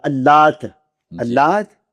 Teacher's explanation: تو بہر صورت اللات میں لام موٹی نہیں